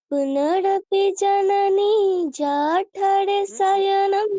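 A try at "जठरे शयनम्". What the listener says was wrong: জঠরে এরকম নয়, জঠরে। এখানে আকার নেই, অকার আছে, অকার বলতে হবে।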